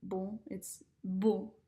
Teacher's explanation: it's kind of like humming before you pronounce the consonant